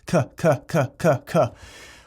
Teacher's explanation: When you do a K sound, the tip of your tongue gets anchored behind your bottom teeth and the center of your tongue's moving. K. All the spit comes from underneath of your tongue.